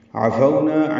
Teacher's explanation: عفونا عین وسط حلق سے ادا کریں گے، فو لین ہے، ہونٹوں کو آگے لائیں گے، نہ تمام گول کریں گے، نہ الف مدہ 2 حرکات لمبا کریں گے.